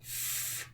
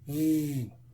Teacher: if I make a f sound, I don't change the shape of my mouth. All I do is I turn my voice on. Okay, so f becomes v.